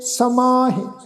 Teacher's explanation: ਸਮਾਹੇ ਜਿਹੜਾ ਸ਼ਬਦ ਆ ਨਾਸਿਕ ਉਚਾਰਨ ਕਰਾਂਗੇ ਬਿੰਦੀ ਸਹਿਤ